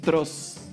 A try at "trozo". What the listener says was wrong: No, es que trozo, ella lo dijo con ese. Un trozo sería... No, es que un trozo sería un trozo. Trozo. No, es que así se dice correctamente.